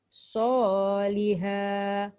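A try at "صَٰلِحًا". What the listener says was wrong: Dia jangan solihah. Kalau solihah dia jadi huruf ha. Tekan kat tengah. Solihah. Ha. Baru betul huruf dia.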